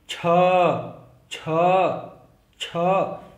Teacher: छ मतलब हमारी जुबान पहले मूर्धा से टकरा रही है, फिर वो हमारा मुंह खुल जा रहा है और पूरा बाकी का साउंड जो आ रहा है हमारे कंठ से आ रहा है। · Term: कंठ मूर्धा